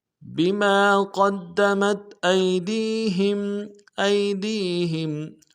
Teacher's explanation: ہا کو میم ساکن کے ساتھ ملائیں گے، میم ساکن میں غنہ کریں گے